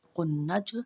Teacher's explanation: پیش نون قن، نون زبر جیم نج، قنج، جیم ساکن ہے، جیم پہ قلقلہ ہوگا، جیم کو ہم نے ہلا کے پڑھنا ہے